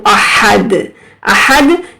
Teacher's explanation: دال جو ہے حروف قلقلہ ہے، یہاں پر ہم جھٹکا دے کر پڑھیں گے۔